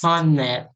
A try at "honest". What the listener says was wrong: This is silent H. Honest. Honest. honest. Silent H. You don't pronounce the H, they are silent.